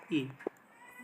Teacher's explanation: ई का उच्चारण तालु के समीप होता है, इसलिए इसे तालव्य स्वर भी कहा जाता है